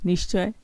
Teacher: চটা তালব্য ধ্বনি, তালব্য স হয়েছে